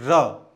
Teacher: जब र का हम उच्चारण करते हैं तो जीव ऊपर तालू से रगड़ खाते हुए दांतों के ऊपर गिरती है उच्चारण करके देखो र तो जीव ऐसे गिर रही होगी इसलिए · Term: लुंठित